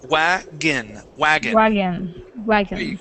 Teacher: the O here at the end, we're not going to pronounce that as an on sound. We'll pronounce it as a short I, saying wagon, wagon.